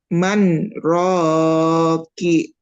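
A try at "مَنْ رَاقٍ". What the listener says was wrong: Rocky atau Rokin? Itu mamanya nggak berhenti. kan berhenti 2 harokat. Man, ro.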